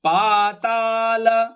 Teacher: ಪಾ ಮತ್ತು ತ ಎರಡು ದೀರ್ಘಪದ, ಲ ರಸ್ವ